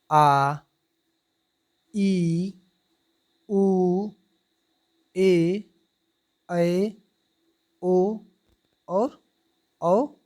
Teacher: इनके उच्चारण में ह्रस्व स्वर की अपेक्षा दुगना समय लगता है, क्योंकि इसमें 2 मात्राओं का समय लगता है। अतः इसे द्विमात्रिक स्वर भी कहते हैं। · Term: दीर्घ स्वर